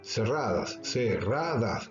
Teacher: A veces no lleva tilde, por ejemplo, cerradas, cerradas, ra es la sílaba fuerte, la sílaba tónica, la vocal tónica ahí es la A y no lleva tilde